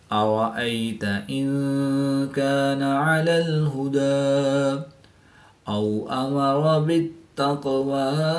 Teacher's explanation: واو ساکن سے پہلے زبر ہے تو واو لین اس کو لمبا نہیں کریں گے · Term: یا لین